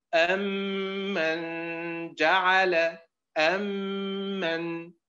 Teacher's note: وكما تعلمون المثلان الصغير لا يكون إلا بين كلمتين، لكن أمن بالأداء الخاطئ أصبح حرف غنة مشدد، أصبحت كلمة واحدة